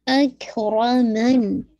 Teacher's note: اکرمن ہمس بھی ہے, لیکن شدہ پہلے, پھر ہلکی سی ایئر, ایسے ٹائم نہیں دیجیے گا زیادہ.